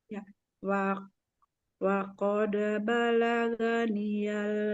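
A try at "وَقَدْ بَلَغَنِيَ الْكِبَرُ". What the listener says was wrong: balaga. Nah, huruf ghain itu tidak dibaca ga ya, tapi gho. Jadi bukan balaganiyah, tapi waqad balagoniyal kibar.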